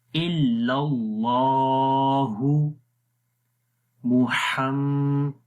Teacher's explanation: 1 second لمبا کریں گے اور آواز کو ناک کے اندر لے کر جائیں گے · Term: غنہ